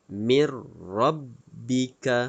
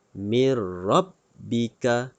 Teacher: idgham bilagunnah tidak perlu dengung tidak perlu dengung